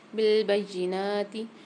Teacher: اچھا, یہاں پر با کے ساتھ یا مشدد آ رہی ہے, تو با کو یا کے ساتھ ملا کے پڑھیں گے. نون کے اوپر کھڑا صبر ہے, ان نون کو ایک الف کی مقدار کھینچ کے پڑھیں گے